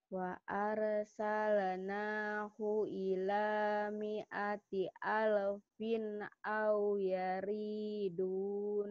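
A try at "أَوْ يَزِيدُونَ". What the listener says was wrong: Bukan yari tapi yaziduna. Wa arsalnahu ila mi'ati alfin au yaziduna.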